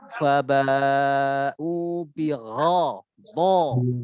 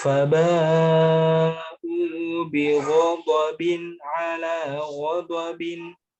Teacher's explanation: huruf ghain dan dot karena dia punya sifat isti'la, ya. Jadi lebih ditebalkan sedikit.